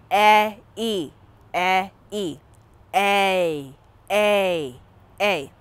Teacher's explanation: a is really e like the e in bed gliding into e again